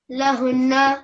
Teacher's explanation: A little bit more stress on the noon mushaddad because of the shadda.